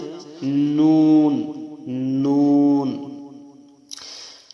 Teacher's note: ৯ নম্বর মাখরাজ জিহ্বার আগা তার বরাবর উপরের তালুর সঙ্গে লাগাইয়া একটি হরফ উচ্চারিত হয়, সেটা হচ্ছে নুন, নুন।